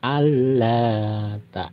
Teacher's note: nun mati bertemu lam jadi nunnya tidak terbaca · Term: idgham bilaguna